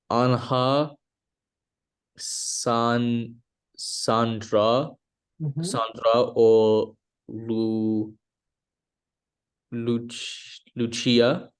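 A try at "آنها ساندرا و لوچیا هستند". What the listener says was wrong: Perfect. Exactly.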